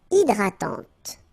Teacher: So remember, H is not existing, and then this Y is pronounced like E. Hydratante. Okay, don't insist on the final E, and this is nasal.